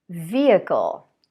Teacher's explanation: a word that has H in the middle of the word, but the H is dropped